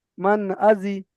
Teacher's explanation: নুন সাকিনটাকে বিনা গুন্নায় তাড়াতাড়ি পড়তে হবে। বিনা গুন্নায় জাহের করে তাড়াতাড়ি পড়তে হবে। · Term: ইজহার